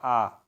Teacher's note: विवृत में क्या हो जाएगा जीभ नीचे रहेगा जीभ नीचे रहेगा आ इसमें जीव जो है नीचे रहेगा यह